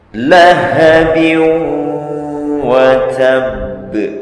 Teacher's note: Maka membacanya digunnahkan, dimasukkan ke dalam rongga hidung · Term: Idgham bi gunnah